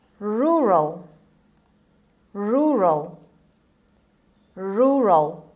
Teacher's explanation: the stress is on the first R, the first syllable, rural. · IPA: /ˈrʊrəl/